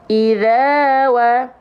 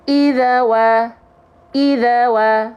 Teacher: tugasnya Alif hanya untuk memperpanjang huruf yang berharakat fathah sebelum Alif Zal di sini dibaca panjang dua harakat karena fathahnya ketemu Alif